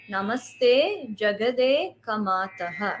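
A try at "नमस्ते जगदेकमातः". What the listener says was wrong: No, it is together. Jagad Eka Mataha. Jagadeka Mataha.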